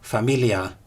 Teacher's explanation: an I followed the L, and so the L was a clear L, as in English light L